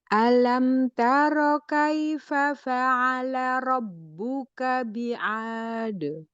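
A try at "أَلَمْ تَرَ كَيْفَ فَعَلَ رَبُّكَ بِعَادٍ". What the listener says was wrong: Alam jelasin hamzahnya.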